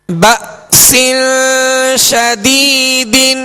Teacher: با کے ساتھ حمزہ ساکنہ ہے، یہاں جھٹکا واضح کریں گے